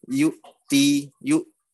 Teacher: Nah, ini ada hamzah. Sukun berhenti suara, berhenti udara. Yu'ti, yu. Jangan jangan terlalu neken.